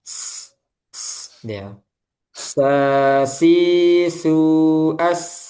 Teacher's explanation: dia juga punya sifat sofir. Ada desisan ketika mengucapkan huruf sin.